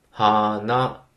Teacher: われると思います。花、あ、これは当然方言によりますが、まあちょっといわゆる共通語でお話ししていきますと、花、日本語のアクセント、まあいわゆる共通語のアクセントの規則として、最初の文字、まあより正確にはモーラと言いますけど、まあ1モーラ目と2モーラ目の音の高さは高い低いが違わなきゃいけないっていうざっくりしたルールがあります。それに、照らし合わせると、 はーな、なので、低い高いとなりますね。 はーな。フラワーの方もはーなだし、ノーズの方もはーなになります。高い低いではないんですね。はなではないです。まあ、この日本語のアクセントで高い低いがいまいちわかんないっていう方は、まあ、ピアノの鍵